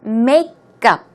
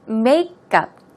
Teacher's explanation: the stress goes on the first syllable, so it's makeup.